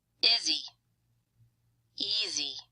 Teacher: Izzy sounds kind of like one word with primary stress on the first syllable, and easy is a 2-syllable word with primary stress on the first syllable.